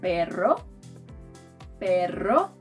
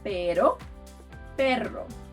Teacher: But to do the harder version of the r which is called erre, you have to trill your tongue.